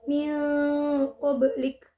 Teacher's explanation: Juga ada hukum bacaan qalqalah sughra yaitu pada ba berharokat sukun di tengah kalimat. Cara membacanya adalah dipantulkan secara ringan